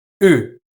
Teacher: It is more fronted than the general American u I'm using. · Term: goose fronting